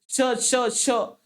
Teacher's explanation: आता य आणि श चा उच्चार जेव्हा करत असता की नाही य तेव्हा तुमची जीभ बघा तालूला लागते. श श श श म्हणत असताना तुमची जीभ तालूला लागते, म्हणून त्याला आपण तालव्य व्यंजन किंवा तालव्य वर्ण असं आपण म्हणत असतो.